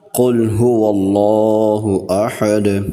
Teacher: قاف کو موٹا کر کے پڑھیں گے، قاف کو لام سے ملانا ہے کیونکہ لام کے اوپر جزم ہے۔ اس کے بعد ہا کے اوپر پیش ہے اور ہا کو اس کے مخرج سے ادا کرنا ہے۔